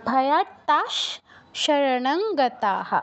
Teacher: সেই জন্য বিসর্গর জায়গায় তালব্য স হসন্ত উচ্চারণ হবে।